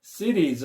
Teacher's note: 이때 t 발음을 리을 발음으로 많이 한다는 거